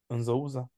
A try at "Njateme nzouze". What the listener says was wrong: Ne dis pas nzouze. Nzouze. Ne fais pas un élan. Njateme nzo. njateme nzo. Ne fais pas cet élan-là. Njateme nzouze. Donc, ne fais pas cet élan d'occlusion. Njateme nzo.